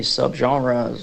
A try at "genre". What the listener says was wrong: Good job on genre.